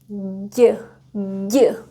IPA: ɟ